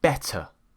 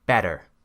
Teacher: instead of pronouncing it as a T, an American pronounces it as a D.